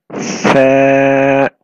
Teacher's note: The sa comes out when the tip of the tongue touches the edge of the top two front teeth. So the tip of your tongue comes out between your teeth.